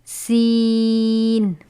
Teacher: سین حروف صفیریہ میں سے ہے جس کی آواز سیٹی کی طرح ہوتی ہے